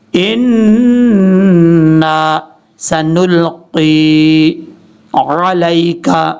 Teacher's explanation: نون کے اوپر جب بھی شد آئے گا تو وہاں پہ غنہ کیا جاتا ہے 2 سیکنڈ کے قریب